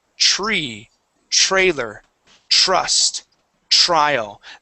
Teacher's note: when we pronounce a TR sound okay we can sort of think of that like a CH so instead of saying Tre okay we do a CH sound